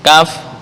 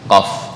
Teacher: Kaf agak ke atas. Di sini. Qaf agak ke dalam tapi nggak sampai ke tenggorokan. · Lahawiyah adalah huruf yang keluar dari pangkal lidah, titik. Nah, pangkal lidah ada yang sebelah atas, yaitu kaf, ada yang agak ke dalam, yang disebut qaf. Nah, ini dekat dengan anak tekak.